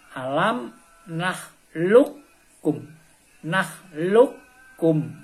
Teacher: Maka huruf yang pertama qaf yang sukun harus melebur kepada huruf kaf. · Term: idgham mutaqaribain